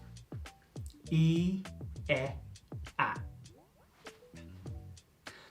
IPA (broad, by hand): i:, e, æ